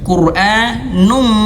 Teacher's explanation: langsung quranum dan tahan dua harakat